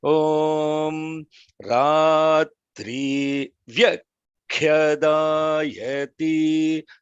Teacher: you have to pay attention to the holding on the vya and also the holding on the khya. So it is if you say vyakhyadāyati without the mahaprana, the meaning is different. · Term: mahaprana with the holding